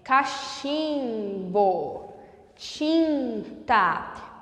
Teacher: Sinta o som subir para o seu nariz. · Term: vogal nasalizada